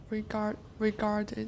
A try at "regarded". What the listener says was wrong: Yeah, more R. Regarded.